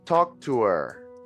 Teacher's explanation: when we are speaking fluently we will not pronounce the h in her or him · We will not pronounce the H in her or him, and we will not pronounce the TH in them.